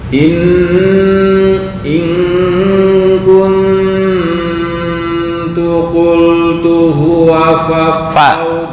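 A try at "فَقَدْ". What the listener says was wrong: faqad bukan waqad.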